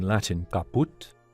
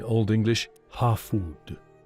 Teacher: the initial k seen in Latin caput shifted to h in Old English hafud